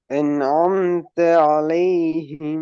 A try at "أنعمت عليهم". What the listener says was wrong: எஸ், தேயும் ஆயினும் சேரணும், நூனும் ஆயினும் சேரணும். ஐன் தான் சேரணும். அண்ணன் அன்னம் அன்னம் அனந்த அனம் தலைஹிம் அனம் தலைஹிம் என்று தேயும் லாமே ஓதுறல்ல. ஐனை உச்சரிக்கணும். அந்த ஐன் முன்னுக்கு பின்னுக்கு வர இரண்டு எழுத்துக்களை சேர்க்கிறதாக வரணும்.